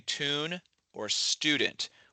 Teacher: I would say tune or student with an ooh sound. I would not use the u dip thong, but some people will depending on where they're from.